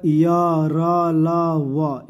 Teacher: य र ल व को अंतस कहा जाता है, क्योंकि इसका उच्चारण व्यंजन तथा स्वरों के मध्यवर्तीय से जाना पड़ता है। इन चारों के अर्ध स्वर भी कहा जाता है।